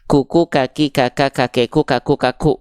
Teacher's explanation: hams ini artinya adalah mengalir nafas